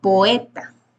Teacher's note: La O y la E son vocales abiertas, por lo tanto se tienen que separar. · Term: hiato